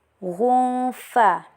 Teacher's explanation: Karena tanwin bertemu dengan fa, jadi dibaca samar dengan dengungan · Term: ikhfa hakiki, hukum ikhfa hakiki